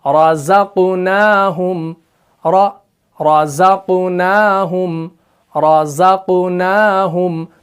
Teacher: ठीक है, जैसे कुरान मजीद के अंदर है, सूरह बकरा के अंदर आयत नंबर 3 के अंदर बिस्मिल्लाहिर्रहमानिर्रहीम वमिम्मा रज़क़नाहुम र, यहां पर आपने ध्यान देना है, रॉ जो है ये मुफक्खम है, जा जो है ये मुरक्कक है। रॉ को मोटा पढ़ना है क्योंकि रॉ के ऊपर जबर है, और जा को बारीक पढ़ना है क्योंकि ये मुरक्कक है, इसको बारीक पढ़ा जाता है क्योंकि इसके अंदर सिफत इस्तिफाल भी है।